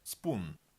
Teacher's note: В слове spoon / p / произносится без придыхания